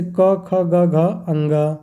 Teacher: जिनकी ध्वनियाँ कंठ अर्थात गले से निकलती है उन्हें क्या कहते हैं, कंठ ध्वनियाँ